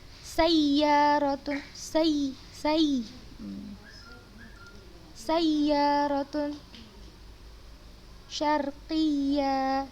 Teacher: kita tekankan suara kita pada saat bertemu dengan waw dan ya bertasydid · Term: an-nabar